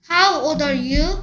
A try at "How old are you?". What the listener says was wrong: 또 L 소리 안 낸다. How old are you?